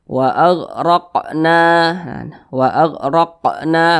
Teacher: Huruf qaf termasuk salah satu huruf qalqalah. Ya, jadi apabila dia sukun maka dipantulkan.